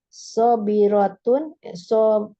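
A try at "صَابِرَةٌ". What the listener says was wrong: Nah, di sini pakai doma ya, Umi ya. Iya, pakai domatain.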